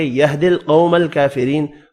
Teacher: قاف پر پڑھیں گے, قو واو لین ہے اور یہ والا کاف کھڑی زبر کی وجہ سے ایک الف کی مقدار میں کھینچ کر پڑھیں گے. · را کو باریک پڑھنا ہے زیر کی وجہ سے